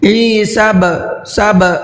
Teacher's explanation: با میں دیکھیے قلقلہ کرنا ہے، ہلکا سا آواز کو ڈبل کرنا ہے. عیسب سب اس طریقے سے، کیونکہ با حروف قلقلہ میں سے ہے اور اس کے اوپر جزم ہے.